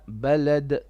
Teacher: Now on your dal at the end, make a bit of qalqala.